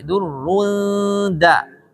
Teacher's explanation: Jangan durrun da'a, tapi durrun da. Durrun da, karena dalnya tipis. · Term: ikhfa